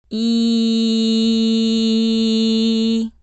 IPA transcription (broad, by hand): i